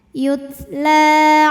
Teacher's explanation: Karena ada huruf lam berbaris fathah panjang maka huruf lam panjang dua harakat. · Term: mad thobi'i